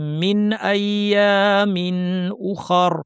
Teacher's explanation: ইজহার করে স্পষ্ট করে পড়তে অর্থাৎ নুন সাকিনকে বর্ধিত না করে এর গুন্নাকে না বাড়িয়ে স্বাভাবিক অবস্থায় রেখে পড়তে হবে। মিন আইয়ামিন উখার, উখার বলার সময় উ শক্ত, খ র দুইটাই ভারী, রতে সুকুন দিয়ে থেমে যাব।